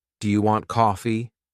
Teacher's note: when I ask a question, my voice often goes up at the end. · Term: intonation